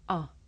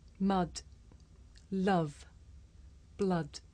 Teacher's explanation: this is a short vowel sound it's pronounced ah